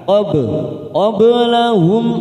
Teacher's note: karena mati di tengah kalimat jangan lupa dipantulkan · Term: qalqal